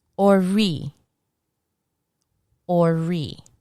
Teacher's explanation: the r rolls in spanish